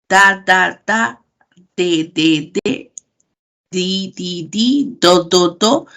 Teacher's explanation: Este ápice de la lengua llega hacia la cara interna de los dientes. Cuando ustedes pronuncian la D y la T, háganlo y van a observar cómo la punta de su lengua llega hacia esa zona. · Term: dentales